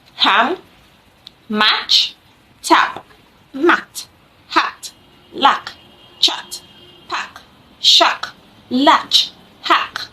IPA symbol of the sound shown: a